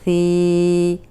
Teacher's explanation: اب ثی جو ہے سامنے کے جو دو دانت ہیں ان کے کنارے پہ زبان رکھ کے ادا کریں گے، سیٹی کی آواز نہیں آئے گی